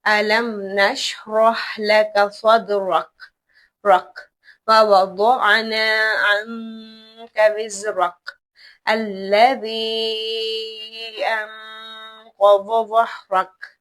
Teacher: ہم کاف کو ہلکا سا جھٹکا دے کر وقف کریں گے